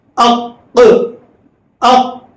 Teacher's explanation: زبان کی جڑ پرچیب کے اندر حلق کے اوپری حصے کو لگانے سے قوف نکلتا ہے، زبان کی جڑ کے اندر سے لگا کر بولے قوف، اق اق، تو آواز مخرج کو ٹکرا رہی ہے تو قلقلہ اسے کہتے ہیں